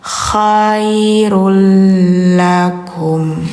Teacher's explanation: Nah, jadi bacanya bukan khairun ya, tapi l. Khairul lakum gitu. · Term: idgham bila gunnah